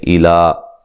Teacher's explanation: हमज़ा को तहकीक से पढ़ेंगे, वाज़े पढ़ेंगे, नरम नहीं पढ़ेंगे